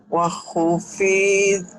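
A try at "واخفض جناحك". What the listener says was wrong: Bukan wahu, ini memang pentolannya terlalu panjang mungkin ya Bu. Ini sukun. Ini sukun. Wakhfid. Nah, bukan wahu tapi wakhfid. Wakhfid janahaka. Wakhfid janahaka, wakhfid janahaka, wakhfid janahaka, wakhfid janahaka, wakhfid janahaka.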